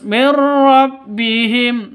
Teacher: nun mati bertemu dengan ro cara bacanya masuk ke ro tanpa dengung